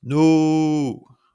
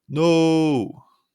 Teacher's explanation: holding no before lowering it to sound dramatic. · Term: held pitch